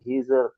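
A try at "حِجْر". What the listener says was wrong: হিজের নয়, হিজর।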